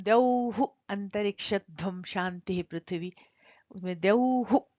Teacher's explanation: औ की मात्रा के साथ जब विसर्ग लगता है तो वो हु की तरह हो जाता